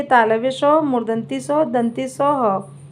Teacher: इनको बोलने में मुंह से गर्म हवा निकलती है, तो इसलिए इनको ऊष्म व्यंजन कहते हैं।